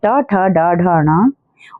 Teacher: मूर्धन्य होते हैं। जीभ की नोक को मुंह की ऊपरी छत से लगा के जो बोले जाते हैं